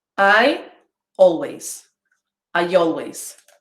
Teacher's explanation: so i introduced a ye sound in there after i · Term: intrusion